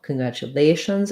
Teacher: the stress is on the lay